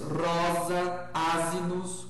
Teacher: O S entre vogais tem som de Z.